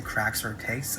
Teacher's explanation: when I say cracks or takes, I tend to not emphasize the K